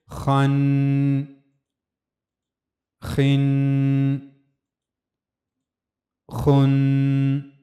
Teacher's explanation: چونکہ یہ پر پڑھے جانے والے حروف میں سے ہے خا، تو اس لیے آواز کو پر رکھا جائے گا۔